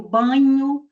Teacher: o ar vai sair dos pulmões, vai dirigir-se à cavidade nasal e também a cavidade oral, produzindo, como eu disse, esses sons com o que nós chamamos de ressonância nasal.